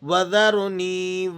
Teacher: یہ یا مدہ ہے، نون یا زیر نی، 1 الف کے برابر کھینچ لیں گے آپ اسے۔